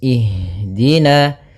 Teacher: pada lafal ha usahakan di sini mengalir nafasnya dan lembut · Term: Jar anfas